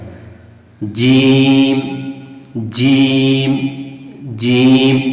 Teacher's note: यानी जुबान का बीच वाला हिस्सा और उसी के मुकाबिल जो ऊपर का तालु वाला हिस्सा है वहां से ये जीम निकलता है।